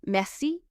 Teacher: you stress the last syllable